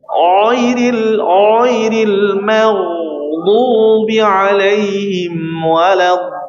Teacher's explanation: huruf tebal ucapannya tadi ya, dengan menaikkan pangkal lidah